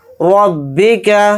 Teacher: रॉ को मोटा यानी पुर पढ़ेंगे , रॉ को बा के अंदर मिलाकर पढ़ेंगे, बा के नीचे